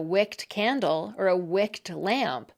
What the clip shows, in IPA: wɪkt